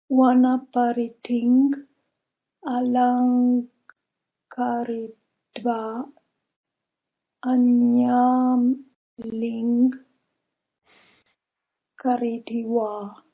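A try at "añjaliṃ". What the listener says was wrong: Okay, this one, it sounds like you might have a Latin prejudice. J is ja. Anjaling. This will never be ya. Yeah, anjaling.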